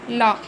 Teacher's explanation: पार्श्विक में क्या है? इनके उच्चारण में मुख्य द्वार बीच में बंद हो जाता है और हवा दोनों ओर से निकल जाती है